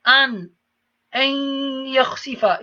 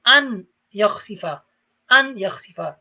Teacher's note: the noon disappears, goes into the ya. You read a yakhsifa, but you apply ghunna as well, because it is from the four letters ya, mim, waw, noon.